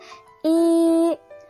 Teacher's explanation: Yang pertama ada tabel vokal menurut International Phonetic Alphabet. Di sini pada kolom depan dengan bunyi tak bundar baris tinggi terdapat fonem I